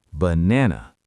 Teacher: Only the middle A is a real A. The other two are schwas. · only the middle A is a real A. The other 2 are schwas. Banana. If I pronounced it perfectly, banana, I would sound weird.